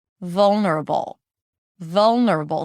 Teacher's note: since the cup sound and the schwah are not that different, then the jaw is pretty much in the same place for the entire word. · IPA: ˈvʌlnəɹəbəl